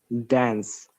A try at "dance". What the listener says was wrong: Okay, you had you're trying to pronounce the word in American IPA, dance. Yeah, but British English we don't say dance, we say dance. Ah sound, as sound. So this is the one of the differentiation between the British IPA and American IPA.